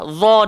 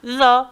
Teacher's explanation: Dha tebal, zal ni nipis. Jangan baca dha haza.